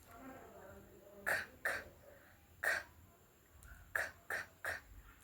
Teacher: soft palate, the back part of the mouth